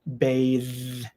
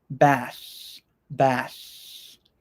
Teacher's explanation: that one has the voiced TH sound, bathe. But this word, bath, has the unvoiced TH sound, bath, bath.